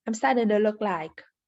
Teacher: She doesn't pronounce the G in starting. This is common with verbs when in the ing form.